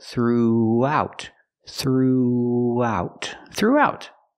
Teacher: Make the R sound, with your voice, through, throughout. We have the oo sound, like moon and soon, through. Plus the ow sound. And we have to link these vowels.